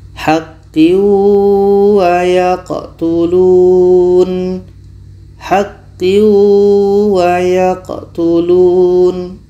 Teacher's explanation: Tanwin masuk ke waw, tapi tidak sempurna masuk ke waw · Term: idgham nakish